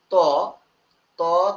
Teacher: জিহ্বাটা গিয়ে দাঁতে লাগতেছে সরাসরি, তখন এর নাম হচ্ছে দন্ত বর্ণ